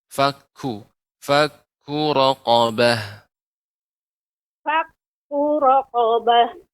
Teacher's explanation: di antara sifat kaf adalah hamas, adanya aliran udara.